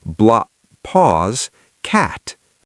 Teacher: Imagine you're about to say black. Your tongue goes up to the back of your throat to make the K. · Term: one long K sound